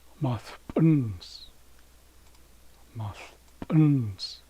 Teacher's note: So, we're accenting the last syllable again.